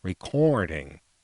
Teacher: there's this thing about people from Richmond they all pronounce the O R sound nasally